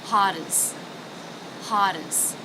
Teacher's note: You'll notice I'm not saying as. I'm reducing the a vowel to the schwa.